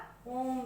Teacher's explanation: तिगुना समय जब लगता है तो ये वो हो जाता है प्लुत स्वर